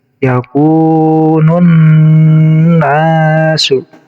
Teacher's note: Itu cara membaca alif lam syamsiah, jadi alif lamnya tidak terbaca.